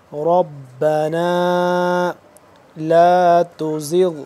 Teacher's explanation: ربنا را کو موٹا کر کے پڑھیں گے